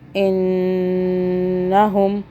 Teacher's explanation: نون کو ہم نے پھر ساکن چھپا ہوا کر کے 2 سیکنڈ کا ہولڈ کرنا ہے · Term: نون کا قاعدہ